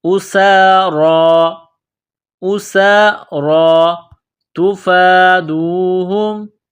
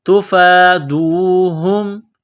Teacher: فا کے اوپر کڑا زبر ہے، ایک الف کے لمٹ میں کھینچنا ہے